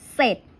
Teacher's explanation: เวลาเราอ่านออกเสียงเนี่ยเราจะอ่านแตะพยัญชนะต้นตัวหน้าเท่านั้นนะคะ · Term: คำควบกล้ำไม่แท้